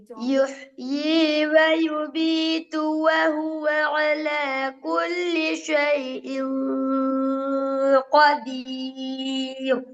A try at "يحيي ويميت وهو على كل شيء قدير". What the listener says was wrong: பிழை. கதீர் ரா பிழை.